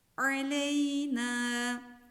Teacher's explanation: ayın harfinin mahreci boğazın tam ortasıdır